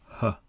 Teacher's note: The articulation is the deepest inside the throat. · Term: h sound